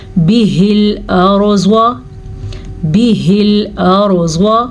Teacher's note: रॉ साकिन है और रॉ साकिन से पीछे वाले हर्फ पे ज़बर है तो रॉ पुर पढ़ी जाएगी